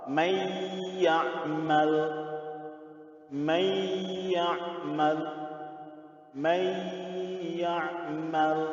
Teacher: Ya, nunnya lebur masuk ke dalam huruf ya. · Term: idgham beguna